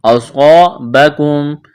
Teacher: الجمعان فبإذن اللہ وليعلم المؤمنین، وما، اس کو کھینچنا ہے، اصابکم، صاد کو موٹا کرنا ہے، صاد میں سیٹھی کی آواز پیدا کرنی ہے